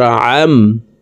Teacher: আইন হরফকে হলকের মধ্যখান থেকে চাপ দিয়ে উচ্চারণ করতে হবে, কারণ আইনের মখরাজ হলকের মধ্যখান থেকে হবে।